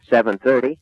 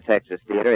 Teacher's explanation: the flapping, that's what it's called, the technical term, where the T is pronounced as a soft D